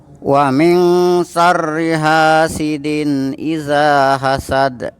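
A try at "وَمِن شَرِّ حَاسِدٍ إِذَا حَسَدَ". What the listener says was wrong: Tinggal ditajemin saja ha-nya. Tapi udah ada bedanya.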